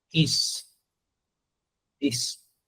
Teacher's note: muchas veces en la escritura vas a ver una s pero la fonética O sea el sonido va a ser Z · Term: con z